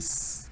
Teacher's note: When you say s, you put your hand on your throat and say s. You don't hear any vibration. از وقت دستتون رو میذارید رو گلوتون و میگید س، هیچ vibration، هیچ لرزشی احساس نمیکنید. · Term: unvoiced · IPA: /s/